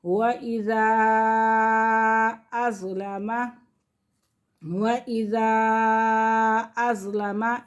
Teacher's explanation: چھوٹا مد ہے کیونکہ حمزہ دوسرے کلمے میں ہے